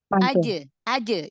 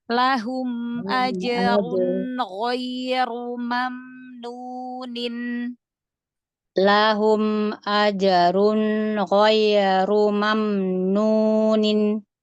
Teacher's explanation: Kol-kolannya jangan ada hamzah. Aje. Jangan aje.